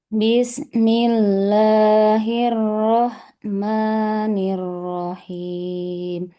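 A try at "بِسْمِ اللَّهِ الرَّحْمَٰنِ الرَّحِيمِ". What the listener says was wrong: Jadi baknya jangan panjang, jangan bis, kan jadi panjang ya. Bismi, Bismillah.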